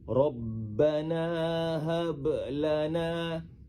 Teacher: Halus saja pantulan bunyi huruf ba tu. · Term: qalqalah sugra